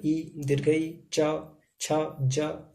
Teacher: तालु का अगर हम बात करें तो ई, दीर्घई, च, छ, ज, ये सब तालु से उच्चारण होने वाले हैं।